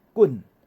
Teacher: 第二声呢，伊是高降调，为悬的降来中央遮，所以叫做▁high▁falling▁悬降调